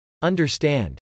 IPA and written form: .ʌndɚstˈænd (understand)